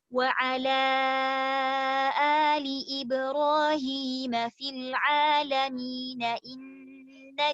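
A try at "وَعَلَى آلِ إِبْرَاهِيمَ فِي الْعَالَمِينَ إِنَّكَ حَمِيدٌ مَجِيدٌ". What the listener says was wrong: Fil alamin. Berhentinya dari fil alamin. Baru kemudian innaka dipisah.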